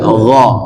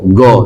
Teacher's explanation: Tidak boleh go, tapi gho. Ada gho, ada bergetar di tenggorokan atasnya itu namanya huruf tenggorokan atas